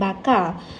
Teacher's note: Akhir sekali, terdapat penggunaan fonem konsonan R dalam perkataan bakar. Fonem konsonan R mempunyai fitur distinktif minus silabik, plus konsonan, plus sonoran, minus nasal, plus kontinuen, plus belakang, plus bersuara.